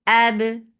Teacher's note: Keep ba light and it will get qalqala.